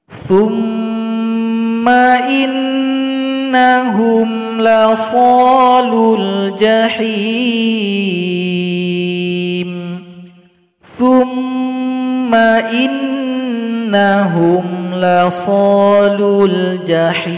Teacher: Di sini mim dan nun yang bertasydid, maka didengungkan 2 ketukan masing-masing. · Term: mim tasydid